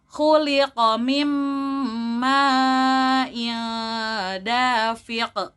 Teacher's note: lanjut diakhirkan dengan qalqalah kubro atau dengan dipantulkan